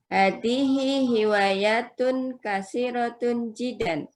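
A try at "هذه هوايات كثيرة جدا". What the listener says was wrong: Jiddan ada, bentar. Jiddan. Pastikan jiddan itu ada tasydidnya. Kasiratun jiddan, bukan kasiratun jidan.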